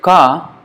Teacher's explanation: So ka, when you say ka, it is coming from there. Ka, you see the back of the tongue or the middle of the tongue is touching the soft palate. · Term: kanthya